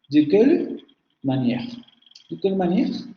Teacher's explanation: En la primera sílaba de un grupo o secuencia fónica, la vocal media central labializada suele pronunciarse.